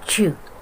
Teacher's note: Palatal sound. These sounds are produced when the blade of the tongue, middle of tongue, touch the hard palates